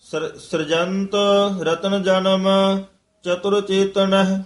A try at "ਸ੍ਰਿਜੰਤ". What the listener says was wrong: ਹਾਂ ਸ੍ਰਿਜੰਤ ਰਾਰੇ ਨੂੰ ਸਿਹਾਰੀ ਲਾ ਕੇ